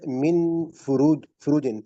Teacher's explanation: نون کو ہم چھپائیں گے، اخفا کریں گے